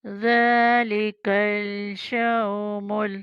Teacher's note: ذال کی دفعہ اپنی زبان جو ہے اوپر دانتوں کے کنارے پہ لگانی ہے اور اس کو لمبا کرنا ہے، اور لام کو ملاتے ہوئے کلکلا نہیں کرنا۔